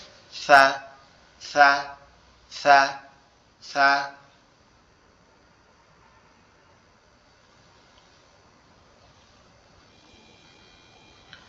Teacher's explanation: সা অক্ষরের উচ্চারণ স্থান হচ্ছে আমাদের জিহ্বার আগা সামনের দুই দাঁতের আগার সঙ্গে লাগবে, লেগে উচ্চারিত হবে সা, সা, সা, সা।